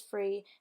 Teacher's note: Voice dental affricatives become alveolar stops, such as they versus day and them versus dem. Voiceless dental fricatives with a following R turn into voiceless labiodental fricatives.